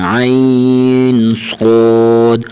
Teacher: حرف صاد کو موٹا کر کے پڑھیں گے